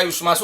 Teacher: ये जो शकार है ये मूर्धन्य शकार है, इसको कई बार दंत शकार लिख देते हैं छात्र, कई बार तालव्य शकार, युष्मासु।